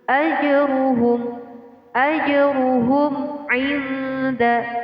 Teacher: Jadi jim di sini dibaca dengan memantul. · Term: qalqalah